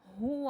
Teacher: یہ والا جو ہا ہے یہ حلق کے آخری حصے سے ادا ہوگا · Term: حرف حلقی